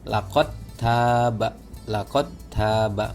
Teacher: Saya coba baca yang di surah At-Taubah, laqad taba, maka dalnya nggak dibaca